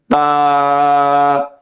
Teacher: তার মাখরাজ হলো জিহ্বার আগা সামনের উপরের দাঁতের মাড়ির সঙ্গে লাগিয়ে।